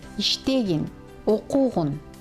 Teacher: Аффиксы в повелительном наклонении, как исключение, безударны. То есть при их произнесении ударение падает не на них, а на предшествующий слог.